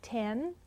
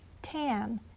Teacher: can you hear the eh and change it to an ah and make tan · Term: substitution